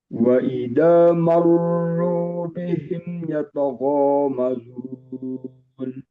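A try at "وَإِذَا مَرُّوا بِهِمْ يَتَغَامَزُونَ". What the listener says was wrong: Wa idza lebih tipis. Wa idza marru bihim yata. Harus benar-benar tipis dan tidak boleh jadi tebal. Ro yang tebal. Yata bukan dari ya tebal. Yoto ro enggak. Yata mazun.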